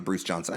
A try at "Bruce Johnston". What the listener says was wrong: you continually call him Bruce Johnson, and it's Johnston.